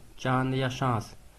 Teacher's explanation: चंद्र बिंदु का जहाँ होता है वो अनुनासिक ध्वनियों के अंतर्गत होता है, क्योंकि अनुनासिक ध्वनियाँ जो है नाक और मुख दोनों से उच्चारित की जाती हैं। हवा जो है नाक और मुख दोनों से निकलती है।